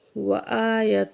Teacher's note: حمزہ کے اوپر کھڑی زبر ہے، ایک الف کے برابر کھینچیں گے